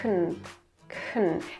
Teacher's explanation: The schwa is between k and n, so no need to pronounce it, and just say kn, kn.